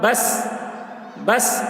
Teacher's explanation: امتحان، بس، با سین زبر بس، سین حروف قلقلہ میں سے نہیں ہے، اس لیے سین میں قلقلہ نہ ہوگا